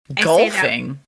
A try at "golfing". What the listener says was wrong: It sounds like you're saying gopher.